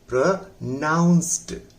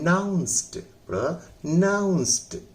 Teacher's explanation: इसलिए ये हो गया प्रोनाउंस्ड, ना पर जोर लगाइए, ये भी दो खंड का है, प्र अलग है, नाउंस्ड अलग है, तो ना पर जोर लगे नाउंस्ड, प्रोनाउंस्ड।